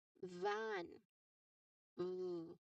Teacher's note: you remain um steady air flow and of course there's an obvious throat vibration there. Okay, that is for letter B.